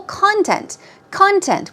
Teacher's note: keep in mind, stress goes on the first syllable, content.